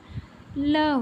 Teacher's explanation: इन व्यंजनों के उच्चारण में स्वास वायु जीभ के दोनों से बगल से बाहर निकलती है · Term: पार्श्विक व्यंजन